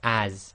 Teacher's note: and that's exactly the same as the English word as but it's giving a slight Zed sound even though in English it's got an S but it's a zed sound